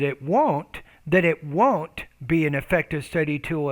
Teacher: put a little bit more stress on that word won't